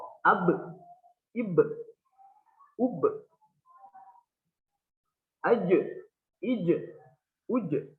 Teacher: Di huruf qalqalah ini kalau huruf qalqalahnya sukun, ada yang condong ke e dan juga ada yang condong ke o. Ba, jim, dal itu condongnya ke e